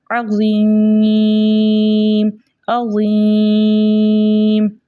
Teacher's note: یا مدہ کو 2 حرکت کی مقدار کھینچ کر پڑھتے، لیکن آگے جو ہے میم کا سکون عارضی وقف کی صورت میں آ رہا ہے، اس لیے یہاں پہ مد بنی مد عارض وقفی، جس کی مقدار 2 4 6 حرکت ہے، لیکن 6 حرکت کی مقدار کھینچ کر پڑھنا زیادہ بہتر ہے